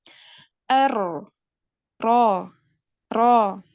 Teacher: kalau orang Arab itu tidak bergetar banyak-banyak, dia hanya sekali getaran saja. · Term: huruf ro